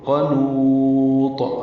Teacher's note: فَيَئُوسٌ قَنُوطٌ، قاف پر ہے، نو واو مدہ ہے، اور طا پہ وقف کر، طا پہ قلقلہ ہوگا، طا ساکن کر رہے ہیں تو قنوط. اب نون کو لمبا کریں گے، مد وقفی یا مد عارض سکون بنائیں گے، طا ساکن پہ قلقلہ کریں گے، اس کی دونوں پیشیں ختم ہو جائیں گی وقفاً.